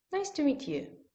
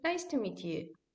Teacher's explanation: Like in a just simple sentence, we use the falling tone.